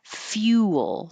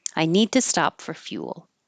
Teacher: Now you're starting with your tongue high in a Y position. Fuel. And it round and then unround.